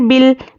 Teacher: अलिफ को नहीं पढ़ेंगे, लाम से मिलाकर पढ़ेंगे